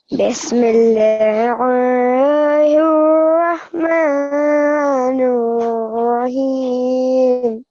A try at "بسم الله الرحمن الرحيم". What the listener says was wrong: like here you kind of created a thick sound for lam. I think you're confused with the previous one here when I told you to make a thick sound, and this one.